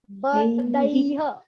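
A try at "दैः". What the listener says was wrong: Okay, just leave out the bakara. Daihi.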